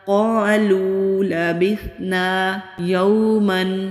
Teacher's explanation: واو ساکن سے پہلے زبر ہے تو واو لین ہے، نرمی سے ادا ہوگا، کھینچیں گے نہیں